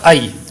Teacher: حمزہ یا زبر ای، اس کو لمبا نہیں کریں گے کیونکہ یہاں پر یا لین ہے